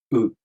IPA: ɯ